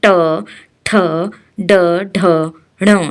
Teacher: मुंह के भीतर ऊपरी छत का अगला भाग, उसे मूर्धा कहते हैं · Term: मूर्धन्य